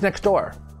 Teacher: we drop the t sound it just sounds like next door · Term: disappearing sound